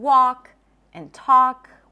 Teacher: The L is also not pronounced in walk and talk. When there is an LK at the end of words, that is a common spelling pattern where the L is not pronounced.